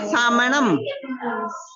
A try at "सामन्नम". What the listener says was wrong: इधर देखिए, साम, यहाँ पे दो ना है, देखो दो है ना, ये दो है ना, सामन्नम